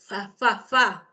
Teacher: el diente superior con el labio friccionan, fa, la F, labio dental.